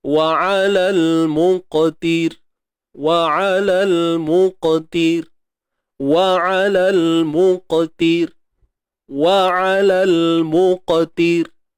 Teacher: Matikan huruf ra ni dengan nipis.